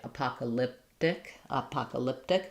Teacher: not going to say that t aspirate